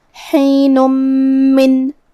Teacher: میم حروف الادغام بغنہ میں سے ہے اور ادغام کا معنی ہے حرف کو حرف میں داخل کرنا، تو ہم یہ تنوین کو میم میں ملا کے غنہ اور تشدید کے ساتھ یہ حکم کو ادا کریں گے